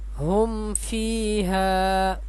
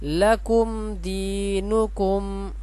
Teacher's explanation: یہ میم ساکن ہے، اس کے بعد تا ہے، یہاں پہ ہم نے غنہ نہیں کرنا، جلدی پڑھیں گے